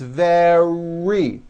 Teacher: d sound the word is not vedi or very it's very make sure that the r sound is strong and your lips are coming forward your tongue is back and you push out the r